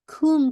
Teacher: کاف کی دمہ واضح کر کے میم کا ناقص غنہ کرنا ہے